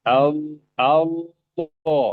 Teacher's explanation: kita naikkan pangkal lidah sedikit merapat ke tenggorokan ya. Merapat tenggorokan walaupun tidak penuh. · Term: lam tafhim